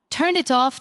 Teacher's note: Turn it off doesn't sound like three separate, clean words. It flows together, almost like turn it off spoken as one smooth unit. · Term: linking